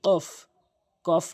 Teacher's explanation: জিহ্বার গোড়া উপরের তালুর সঙ্গে লাগাবেন, কফ ধাক্কা দিয়ে, কফ, কফ না কফ।